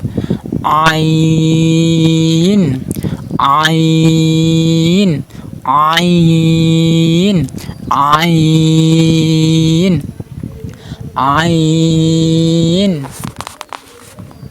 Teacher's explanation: এই গলার মধ্যখান থেকে উচ্চারণ করবেন। এখানে আপনি একটা আপনার হাত দিয়ে চাপ দিয়ে আইন হরফ উচ্চারণ করবেন, একটু চাপ দিয়ে হালকা, এত চাপ না, হালকা চাপ।